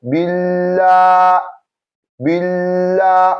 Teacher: A'udhu our slight pause, billah, billah. We take our slight pause before the elongation comes in.